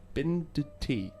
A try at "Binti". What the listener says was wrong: You are speaking to Binti, but just don't forget that this D is silent. It's Binti silent D. silent. Silent. Quiet. Like the L in almond.